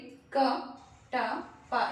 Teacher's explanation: ಉಂಟಾಗಿ ನಮ್ಮ ಉಸಿರನ್ನು ತೆಗೆದುಕೊಳ್ಳುತ್ತೇವೆ ನಾವಿಯಿಂದ ಅಲ್ಲಿ ತಡೆ ಉಂಟಾಗುತ್ತೆ ಎಲ್ಲಿ ನಮ್ಮ ಶ್ವಾಸಕೋಶದಲ್ಲಿ ತಡೆ ಉಂಟಾಗಿ ಒಮ್ಮೆಲೆ ಧ್ವನಿ ಆಚೆ ಬರುತ್ತೆ ತಡೆ ಉಂಟಾಗಿ ಒಮ್ಮೆಲೆ ತೆರೆದುಕೊಳ್ಳುತ್ತೆ ಹಾಗಾಗಿ ಧ್ವನಿ ಅವುಗಳನ್ನು ನಾವು ಹಾಗೆ ಮಾಡುವುದರಿಂದ ಸ್ಪರ್ಶ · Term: ಸ್ಪರ್ಶ ವ್ಯಂಜನ